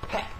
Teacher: 영어식 펫은 펫 하고 입을 조금 더 크게 벌리고 애 발음을 해줘야 돼요. 애 발음을.